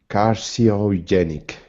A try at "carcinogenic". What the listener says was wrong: you have to say sin carcino carcinogenic